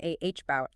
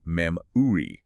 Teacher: Your jaw hangs loose, your tongue rests flat in the middle of your mouth, and you just let out a tiny grunt. Like the first sound in the word about. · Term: the schwa